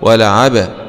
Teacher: باء سكون مع القلقلة